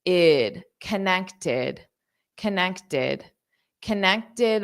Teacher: This T-E-D, the E-D is pronounced as id.